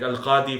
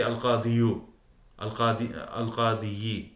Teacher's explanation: you don't pronounce the waw, or you don't pronounce the ya